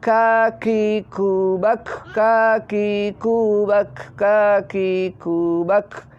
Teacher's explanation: Nah, itu harus keluar mendesisnya karena sifat kaf adalah hamas.